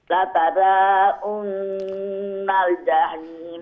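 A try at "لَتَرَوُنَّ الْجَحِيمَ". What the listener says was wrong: লাতারা রা একটু লম্বা হয়ে গেছে বেশি, লাতারা হ্যাঁ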